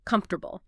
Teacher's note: If you look at the spelling, it looks like comfortable with four distinct syllables. But in natural fast speech, we almost always squash it together. Comfortable. Just three syllables.